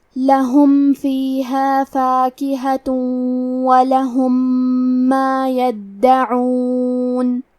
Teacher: کلمت یدعون میں دال پہ تشدید ہے تو ہمیں 2 حرف کے برابر دال کو پڑھنا ہے. عین کی ادائیگی حلق کے درمیان والے حصے سے ہے